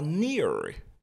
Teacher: nous sommes en anglais américain ici. Donc le R sera accentué. On dira near plutôt que near en anglais britannique.